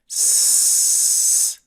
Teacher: We notice that the tongue is raised, but it is not touching anything that stops air from flowing. Air is simply guided through an opening that produces the continuous s sound. We also notice that air is flowing while we produce the letter, and that is very important. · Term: continuous sound